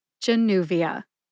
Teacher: They are jah, like justice, new, like a new car, v, like the letter in the alphabet, v, and which is a sound that I sometimes make when I'm trying to think of what I'm going to say next. Put that all together and you get Januvia. Emphasize new. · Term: emphasis